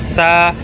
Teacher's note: زبان تھوڑی سی اوپر کے جو دو دانت ہے ان دو دانتوں کے سروں کے ساتھ ٹکرا کر وہاں سے ہم حرف سا پڑھیں گے